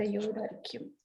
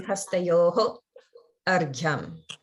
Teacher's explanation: there's no pause between hastayor and argyam. It would be together. If you do break them apart, or if you hear someone break them apart, the way they'll say it is hastayoho argyam, because at the end of hastayo, there is a visarga.